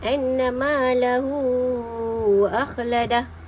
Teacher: Hu tu, hu bertemu dengan alif, Jadi hukum baca mad silah tawilah ni menurut riwayat Imam Hafs, daripada Imam Asim, daripada Tariq Asy-Syatibi ni kadarnya ialah 4 ataupun 5 harakat. Kita nak baca 4 boleh, baca 5 pun boleh.